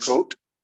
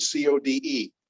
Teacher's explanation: You should perceive a little bit longer O sound.